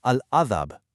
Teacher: Move your lips, close them on the ba, then release with a slight crisp echo.